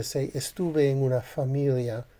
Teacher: when you're speaking faster and you're just not isolating the word, the tendency to be a unvoiced bilabial fricative may be greater. So instead of just saying familia, if you were to say familia, there you've got una familia and it's surrounded by other vowels and consonants.